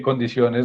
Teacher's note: Porque condiciones no es aguda. O sea, el acento de la palabra condiciones no está en la última sílaba, sino en la penúltima.